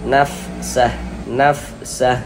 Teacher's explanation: huruf fa itu salah satu huruf yang memiliki sifat hames.